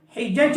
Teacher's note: جیم کا حروف کلکلا کا الفاظ ہے تو اچھال کے پڑھیں گے